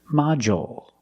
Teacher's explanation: we use the dark L because it's after a vowel at the end of the word